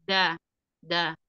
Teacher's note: Huruf D ada di ujung lidah di gigi seri atas